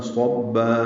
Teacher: صاد پر ہے، با مشدد ہے، با سے ملانا ہے اور با مد عوض، 2 حرکات لمبا کریں گے